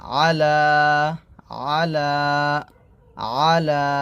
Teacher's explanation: খারা জবর লা এক টান দিবেন